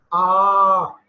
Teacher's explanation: when you say father your mouth is you know completely open for that ah long ah sound